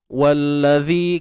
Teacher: Huruf zal kena keluar hujung lidah, kena panjangkan 2 harakat